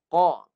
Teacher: Pangkal lidah naik, lekat bagi bunyi tebal. Qa. Pangkal lidah naik, lekat ke anak tekak.